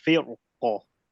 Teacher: If you want to make it a heavy ra, you just raise the back of the tongue.